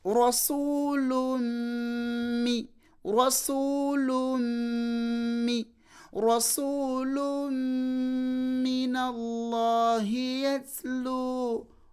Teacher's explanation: fasara hukumu tanwin idghamu bi ghunna. Noba ng'olina okubuliza tanwini muki mu mim, noga nti rasulun mi rasulun minallahi yatlu.